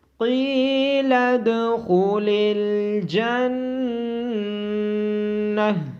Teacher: دال ساکن پہ قلقلہ ہوگا اور خو کو موٹی آواز کے ساتھ پڑھا جائے گا۔ نون مشدد ہونے کی وجہ سے نون پہ غنہ ہوگا اور گول تا پہ جب وقف کرتے ہیں تو اس کو ہا میں بدل دیا جاتا ہے، اس لیے اس کو جنہ پڑھا جائے گا۔